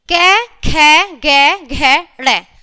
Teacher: उच्चारण स्थान क्या है इनका? कंठ। कंठ से निकलते हैं। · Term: कंठय, कंठीय